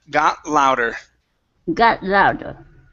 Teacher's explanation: no need to say that t we're going to move it right into the L